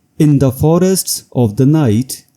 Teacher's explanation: the word in serves as an anacrusis, setting up the rhythm for the accented syllables in forests.